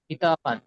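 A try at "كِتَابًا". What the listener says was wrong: কি তো, তোটি আলিফ মাদ্দা টান দিয়ে বলেন, কিতবান।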